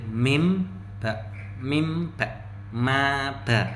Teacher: mim itu termasuk huruf syafawiyah. Jadi berletak di bibir